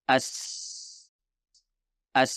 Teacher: Sin adalah konsonan tak bergetar atau suara tak bersuara jadi kita tidak menggetarkan kita suara ketika kita mengucapkan huruf Sin